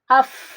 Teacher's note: Setelah diucapkan itu suara mah tertahan tapi napas mah ngalir. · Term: hamas